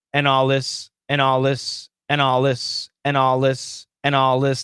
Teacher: there was no th there was no th that we can hear